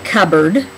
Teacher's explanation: we say cupboard, and you don't hear the first word very much